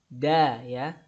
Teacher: Huruf dal. Da ya, suaranya tipis, nggak boleh da, harus da tipis ya. Dan tidak ada udara yang keluar